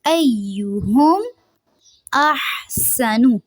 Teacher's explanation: ہا کو واضح ادا کرنا ہے، منہ سے ہوا خارج ہونی چاہیے